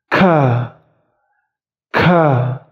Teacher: Bukan ka biasa tapi sedikit dihembuskan angin. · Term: huruf kaf